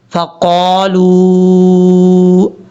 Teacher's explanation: قاف کو موٹا پڑھنا ہے بھاری ساؤنڈ کے ساتھ۔ لام کے بعد واو ہے، اس کے اوپر مد ہے، اس کو لمبا کرنا ہے۔